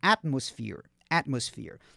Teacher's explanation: Esse PH você fala com F mesmo. Não tem aquele TH da língua dos dentes, não. É um F mesmo.